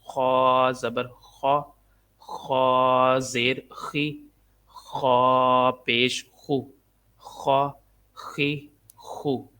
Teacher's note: خا کو ادا کرتے وقت خراش کی آواز آتی ہے